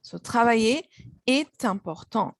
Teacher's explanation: you make the liaison between consonant T followed by vowel I